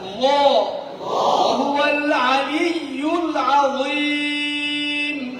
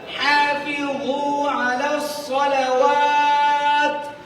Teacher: মাখরাজ হলকের মধ্যখানে হইতে আইন উচ্চারিত হয়